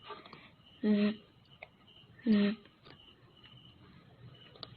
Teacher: Voice sound, dalam melafalkan bunyinya, tenggorokan kita bergetar.